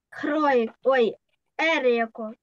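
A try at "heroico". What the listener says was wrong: Еройко. Еройко, sí, muy bien. Ну, запам'ятали, що літера ачі у нас нема.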